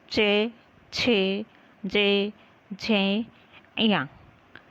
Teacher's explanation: हमारी जीभ का स्पर्श कहाँ हुआ? तालव्य से।